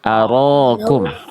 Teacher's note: Ro huruf tebal ketika fathah, jangan ara. Aro, angkat pangkal lidah bukan arakum.